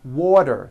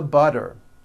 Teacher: if a letter t falls between two vowel sounds which are voiced so if it falls in the middle of vowels then the t is pronounced as a d and the whole word is voiced